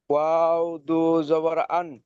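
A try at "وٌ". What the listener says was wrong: ওয়াও দু জাবার আন নয়, হামজা দু জাবার আন হয়, ওয়াও দু জাবার ওয়ান, ওয়ান, ওয়ান ওয়াফ।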